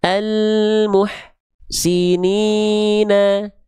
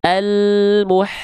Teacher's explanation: pastikan suara H kecil sukun atau H sukun mengalir jangan sampai terputus · Nah, antara dengan si gak boleh ada jarak di antara mereka. Nafas dan suara dari H kecil harus terus mengalir dengan deras.